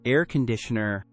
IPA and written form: ˈer kənˌdɪʃənər (Air conditioner)